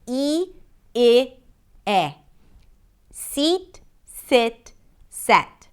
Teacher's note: The tense E as in seat, the lax I as in sit, and the E as in set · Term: front vowel sounds